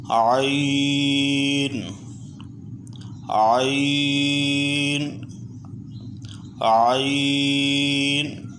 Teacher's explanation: حلق کے بالکل درمیان سے عین کو ادا کریں گے۔